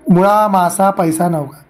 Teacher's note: दीर्घांताच्या आधीचे स्वर रस्व असतात